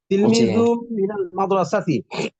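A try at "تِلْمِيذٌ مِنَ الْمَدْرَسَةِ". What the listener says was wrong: তিলমিজুম গুণ হবে, তিলমিজুম মিনাল মাদ্রাসাতি, জালটা মিমকে ধরবে, তিলমিজুম মিনাল মাদ্রাসাতি।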